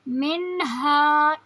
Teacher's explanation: پھر ہے من، ہا، نون سکون کے بعد ہا، حلقی لیٹر بالکل کلیئر پڑھیں گے، منہا، الف سے پہلے زبر، مد طبعی، ہا کو 2 حرکہ لمبا کریں گے